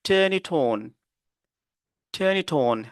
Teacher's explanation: On peut lier d'abord les deux qui sont là, le N et le I, le T et le O.